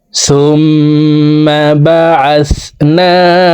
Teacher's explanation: সুম এখানে ওয়াজিব গুন্নাহ 3 সেকেন্ড পরিমাণ গুন্নাহ করে পড়ব। হরকতের বামে নুনে মিমে তাসদীদ হইলে ওয়াজিব গুন্নাহ করিয়া পড়িতে হয়, গুন্নাহ না করিলে আমরা গুনাহগার হব।